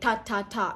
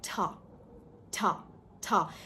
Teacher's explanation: while you're pronouncing the ta sound, you're also releasing a puff of air with ta. So it becomes kind of like a ta plus ha sound.